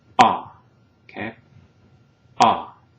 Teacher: when we pronounce A, the tongue is positioned low and in a central position in the mouth, right? Which basically maximizes the unobstructed space inside the mouth.